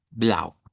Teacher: Lo vamos a pronunciar el diptongo au con una u corta, una a del español y una u corta. Entonces es bastante fácil este color, no es muy complicado, casi que se lee como está ahí.